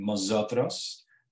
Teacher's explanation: realization of initial M as in mosotros so the N is an M